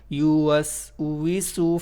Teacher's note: Seen is one of the whistling letter, and of course you'll make little whistle sound while using this scene.